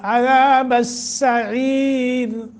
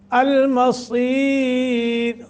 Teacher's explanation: عذاب السعیر سیٹی اور بریک، اور المصیر صاد موٹا کر کے ، را کو باریک پڑھیں گے، ما قبل یا ہے ساکن، · سین صرف محض سیٹی کے ساتھ اور بریک پڑھا جاتا ہے، صاد کو موٹا بھی پڑھا جاتا ہے اور اس میں اگرچہ سیٹی کی آواز ہوتی ہے لیکن وہ موٹی ، اگر دیکھیے عذاب السعیر سیٹی اور بریک، اور المصیر صاد